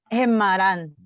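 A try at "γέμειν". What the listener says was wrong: Pero es geme, no gema, sino geme.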